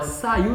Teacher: Então, o U aqui, eles formam um hiato. Agora, saiu não, porque ele deixa de ser uma vogal, ele se torna uma semivogal